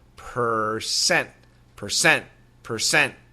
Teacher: The American pronunciation, however, the R is very clear.